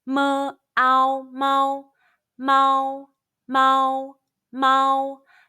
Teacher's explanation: Let's combine the initial M, the final ow, and the high-pitched first tone all together.